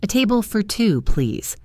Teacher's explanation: The word for is unstressed, so it sounds like fur.